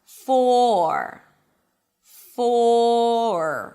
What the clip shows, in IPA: fɔːr